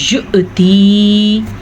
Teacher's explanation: حمزہ کے اوپر ساکن ہے تو آپ کو پتہ جھٹکا ہوگا